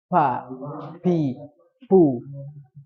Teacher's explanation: salah ketika pengucapan fa itu dari kedua bibir